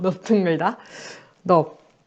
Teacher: 리을 비읍이 리을이 아니라 비읍으로 발음이 되고